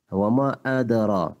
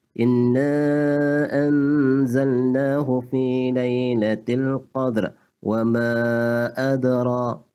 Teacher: Ra taqlil makna di antara tebal dan nipis, dia berada di tengah-tengah. Wa ma adara, tak perlu kita tebalkan, tak perlu kita nipiskan.